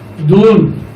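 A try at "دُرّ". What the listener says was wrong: এখানে দেখো খেয়াল করো, এটা কি আছে তারদিদ না? তারদিদ আছে কিনা? তারদিদ থাকলে এখানে এতটুকু অংশ উচ্চারণ হবে এবং হরফ কটা হবে? 3টা। দা ধরছে ডাবল পেশ, তাহলে দা ধরছে কারে? র রে। দূর র এর উপরে জবর দূর র দূর র।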